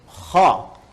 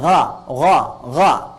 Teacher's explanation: Ini ketika kita ucapkan, itu bagian pangkal lidah di paling ujung itu menyentuh ke langit-langit. Sehingga ketika dia ke atas, suaranya lebih tebal. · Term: isti'la